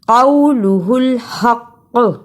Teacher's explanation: رکنے کی صورت میں قاف پر قلقلہ بھی کرنا ہے